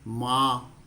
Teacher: ऊपर चंद्र बिंदु है इनको हम बोल के देखते हैं मां नाक से कम आवाज आ रही है कम हवा निकल रही है मुंह से ज्यादा निकल रही है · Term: अनुनासिक